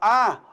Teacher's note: a língua fica bem baixa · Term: vogal baixa